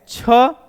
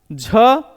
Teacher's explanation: झ दोस्तों तालव्य है महाप्राण भी है और घोष व्यंजन है